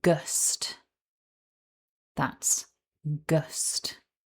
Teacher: syllable 2 starts with the voiced g sound. Then we have the short, weak schwa, followed by the consonant cluster st. Together, syllable 2 sounds like gust.